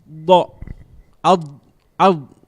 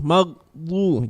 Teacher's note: huruf d itu diucapkan dengan pinggirannya jadi pinggiran lidah itu ditempelkan ke geraham